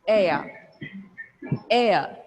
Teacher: we replace the R sound with a vowel sound it can be a diphthong